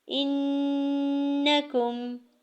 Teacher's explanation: کاف کی زبر کو بالکل بھی نہیں کھینچیں گے